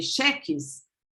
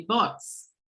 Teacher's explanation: the loss of postonic high vowels, unstressed postonic high vowels. That creates consonant and sibilant in the end of words.